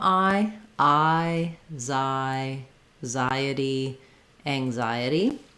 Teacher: You can think about it just as I, like as in I am, or it's the same as this kind of I see with my eye. It's the I diphthong, so make sure that you have gliding from that open ah to that more closed I.